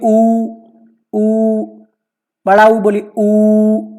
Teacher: तो जीभ का जो पिछला हिस्सा है वहां पर आप देखेंगे हल्का सा वाइब्रेशन होगा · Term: पश्च स्वर